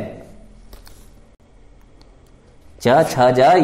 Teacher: ये सभी च वर्ग के हैं, ये तालु से उच्चारित किए जाते हैं, तो इन्हें हम तालव्य भी कहते हैं